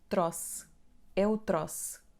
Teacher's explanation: Acentuamos a palavra na penúltima sílaba, que é tro.